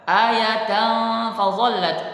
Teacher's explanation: ada fathah tanwin bertemu dengan fa, maka kita membacanya dengan dengung, yaitu bacaan ikhfa